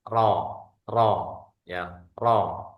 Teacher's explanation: ro ini adalah jahr. Suaranya tidak ada angin.